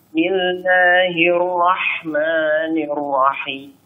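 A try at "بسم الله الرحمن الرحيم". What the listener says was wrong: Untuk ra-nya jangan masuk hidung ya. Jangan bismillahirrahmanirrahim. Jangan masuk hidung.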